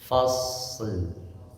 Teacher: Tapi alirkan huruf dulu shad karena shad itu punya sifat dia mengalir nafas dan suara termasuk huruf hames dan rakhawah